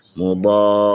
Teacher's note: Lepas tu apabila pertemuan huruf mad dengan sukun. Okey, pertemuan huruf mad dengan sukun kita baca dengan panjang enam harakat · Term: mad lazim kalimi muthaqqal